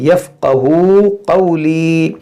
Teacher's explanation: वाव मद्दा, यहाँ पर या मद्दा है, दोनों को खींचेंगे